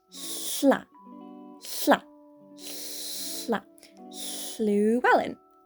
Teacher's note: it's just as if you were making an L noise, but you're pushing air out at the same time. So once you do that all, you get sla, sla, sla, Llewellyn.